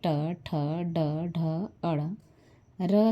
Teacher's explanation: ट ठ ड ढ अड़ र और स का उच्चारण स्थान मुर्धा है इसलिए इन्हें मुर्धन्य वर्ण कहते हैं